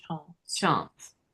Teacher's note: This is one of those short A's that becomes ah.